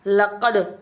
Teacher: قلقلہ حروف کو اگر ساکن ہو تو ان میں قلقلہ خوب ظاہر ہوگا، اس لیے یہاں پہ قد پڑھیں گے، قد، ایسے لگے گا جیسے آواز ہماری لوٹتی ہوئی نظر آ رہی ہو